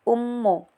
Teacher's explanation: mim bertasjid jadi dibaca dan ditekan dengung 3 harkat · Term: hukum gunnah